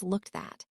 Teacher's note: The word at loses its vowel.